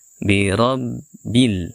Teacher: baca tebal kemudian ada huruf ba yang bertasdid kita tekan huruf ba ini sebelum kita bunyikan harakatnya